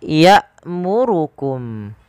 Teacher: hamzah ketika dia berharakat sukun memiliki sifat yaitu berupa jahar dan syiddah. Jahar tertahannya suara, tertahannya nafas, syiddah tertahannya suara.